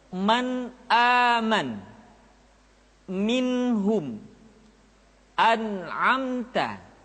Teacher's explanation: nun mati atau tanwin dibaca secara jelas. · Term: idhar